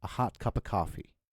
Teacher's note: So when we say hot in English, Americans say hot. So they have a ah sound to it.